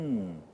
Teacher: tem esse som que sai pelas fossas nasais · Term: som anasalado